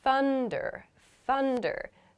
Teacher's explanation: So here I'm making a U sound after my unvoiced TH.